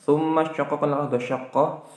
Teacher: ada mim tasydid berupa gunnah musyaddah. Lalu syaqqaq, nah itu ada qalqalah sughra.